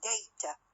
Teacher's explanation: the second syllable which is weak is shorter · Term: weak syllable